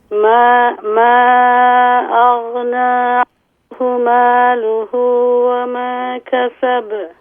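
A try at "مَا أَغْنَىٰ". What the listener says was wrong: ما اغنى، اس کو آپ حرکت نہ دیں، غین کو اس کے مخرج میں ساکن کر کے پڑھیں. ما اغنى عنہ مالہ وما کسب.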